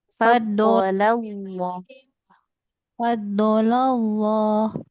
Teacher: Lam kan ini lamnya diapit oleh huruf tebal ya. D tebal sama lam jalalah di depannya tebal. Lam yang di tengah-tengahnya jangan fadolah.